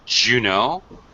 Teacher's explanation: D followed by a y sounds like a j sound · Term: very reduced form